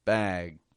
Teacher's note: G, however, you want to hold back. Bag. But you do lengthen the vowel.